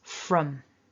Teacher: there's also a weak version using that schwa vowel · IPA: /ə/